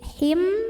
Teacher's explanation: ada tanwin kasrah yang menghadapi huruf ba maka tanwinnya diganti bunyi mim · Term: iqlab